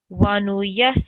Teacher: you're supposed to hold the s sound for 2 seconds because of the shadda, and then 1 second e sound.